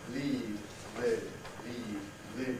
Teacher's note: we've got a difference of duration in as much as this e lasts longer leave but there's also a difference quality this is e which is